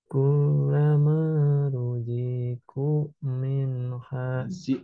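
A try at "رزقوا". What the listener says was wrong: Z-nya kepanjangan. Ruzi, hati-hati. Ruziku langsung.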